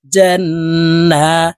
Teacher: তাসদিদওয়ালা নুনের সাথে 3 সেকেন্ড পরিমাণ গুন্নাহ করে ধরে রাখবো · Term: ওয়াজিব গুন্না